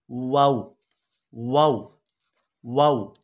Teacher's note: दोनों होंठों को गोल करने से वाव अदा होगी